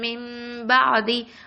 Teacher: மிம்மன்னு சொல்லும் போது வாயை ஃபுல்லாக க்ளோஸ் பண்ணிடுவோம், பாதின்னு சொல்லும் போது வாயை ஓப்பன் பண்ணி நம்ம சொல்லுவோம்